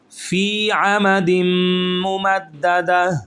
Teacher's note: فی کو کھینچیں گے ایک الف کے برابر